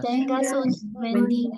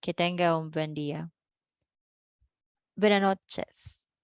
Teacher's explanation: Sometimes if you know, the native speakers will drop the S.